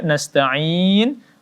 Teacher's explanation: Ain dibaca empat harakat